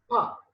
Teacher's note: Pa, when you say sound, you are stopping the air at lips.